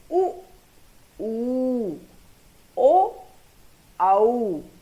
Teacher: जिनके बोलने में हमारे जो होठ हैं, लिप्स जो हैं, वे गोलाकार या वृत्तमुखी हो जाते हैं, उन्हें हम वृत्तमुखी स्वर कहते हैं।